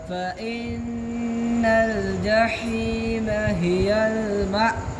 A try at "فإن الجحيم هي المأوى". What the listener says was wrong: अब कल से एंड में झटका कम है लेकिन अभी भी थोड़ा है وأما من خاف مقام ربه ونهى النفس عن الهوى